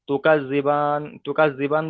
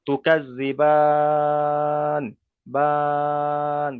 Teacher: বান বলে 3 থেকে 4 আলিফ পরিমাণ টেনে তারপর ওখানে আমি থামবো।